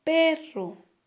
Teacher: perro tiene la mayor intensidad de voz en la primera sílaba · En este caso, el acento prosódico está ubicado, en la primera sílaba, que es P, porque escuchemos perro, ¿verdad? Tiene la mayor intensidad de voz en la primera sílaba. Por lo tanto, allí está su acento prosódico.